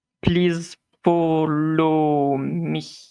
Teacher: it doesn't have any form of intonation. Every word is strangely enunciated, like they separate each syllable. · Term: metallic voice